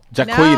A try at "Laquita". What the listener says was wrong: No, look, La Jaquita. Well, there's an L.A. in there. Laquita.